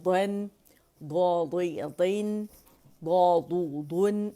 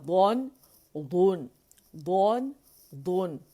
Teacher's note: یہ بھی موٹا ہے. ٹھیک ہے، تفخیم اطباق ہے اس کے اندر. ٹھیک ہے، موٹائی ہے اس کے اندر، زبان لپٹ جاتی ہے تالو سے اطباق کی وجہ سے. تفخیم ہے، موٹا ہے تو موٹائی سے پڑھا جائے گا.